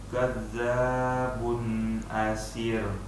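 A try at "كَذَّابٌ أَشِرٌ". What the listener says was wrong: Kurang ini, shinnya kurang tafasyi.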